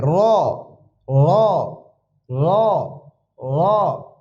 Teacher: দালের উপরে এক নক্তাক্তা দিলে দাল উচ্চারণ হবে র যা র র একটু মোটা হবে এটাকে পুর বলে